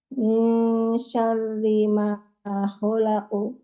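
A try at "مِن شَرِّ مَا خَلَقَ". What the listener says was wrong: Kurang tipis. Pokoknya tipis lagi. Syarri.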